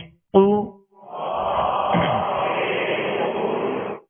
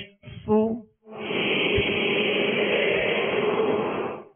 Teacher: دونوں ہونٹوں کو کامل گول کرنے سے پیش ادا ہوتا ہے